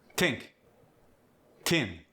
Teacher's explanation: Voiceless th as in think or thin gets the t instead.